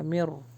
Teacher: نون skip ہو جائے گا، میم جو ہے وہ را سے ملے گا